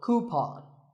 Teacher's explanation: a common incorrect pronunciation is cupen but the second syllable should be pawn